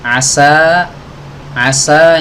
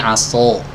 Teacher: seperti ya seseorang menebalkan huruf Sin pada kata asa ya Asa Asa ini kan sinnya tipis Ya kalau dibaca tebal menjadi aso